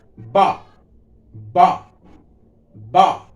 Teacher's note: हल्की जीभ दांत को भी छूती है और ओठ आपस से मिलते हैं, इसीलिए इसका का दंतोष्ठ, दांत और ओष्ठ दोनों से होती है, इसीलिए इसको लिख सकते हैं आप दंत ओष्ठ।